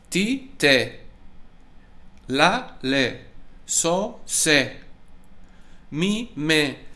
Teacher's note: All the consonant sounds are the same, and the vowel sound, in this case, in the flats, it's an E sound.